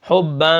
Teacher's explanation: اب یہاں پر یہ جو اخفا ہو رہا ہے حباً، ٹھیک ہے، یہ جو 2 زبر آخر میں تنوین ہے، 2 زبر ہیں، اس کے اندر ناک کے اندر آواز جا رہی ہے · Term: نون تنوین